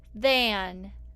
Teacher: I'm using the voiced th sound to make than